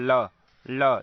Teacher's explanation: जीभ आपका जाकर मूर्धा में लग रहा है और वायु दोनों जीभ के किनारे से निकल रहा है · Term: पार्श्विक व्यंजन